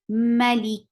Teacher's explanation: Whenever these are with sukoon, we'll get sifa of hums. So kaf will get sifa of hums, and hums is a flow of breath